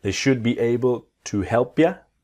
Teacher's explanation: remember the L in should is silent